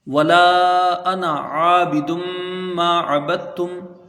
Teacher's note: انا یہ جہاں بھی لکھا ہوا آئے گا پورے قرآن پاک میں کہیں پر بھی اس کا الف یہ پڑھا نہیں جاتا، بلکہ بغیر الف کے اس کو پڑھا جاتا ہے، ٹھیک ہے۔ نون میں زبر ہے، اس کو جلدی پڑھیں گے، یہ الف نہیں پڑھا جائے گا · واو کو جلدی پڑھیں گے، لام کے ساتھ علی مدہ ہے، کھینچ کے پڑھا جائے گا